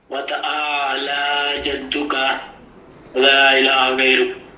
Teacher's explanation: اور تعالی میں لام ایک الف کے برابر لمبا